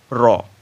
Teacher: কম্পন জাতীয় ধ্বনি একটি যেমন র এটি হচ্ছে কম্পন জাতীয় ধ্বনি র যখন উচ্চারণ করছি দেখো কেঁপে উঠছে এরকম একটা মনে হচ্ছে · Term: কম্পনজাত ধ্বনি